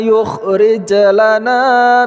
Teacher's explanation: huruf jim sukun pada pertengahan kata, qalqalah sugra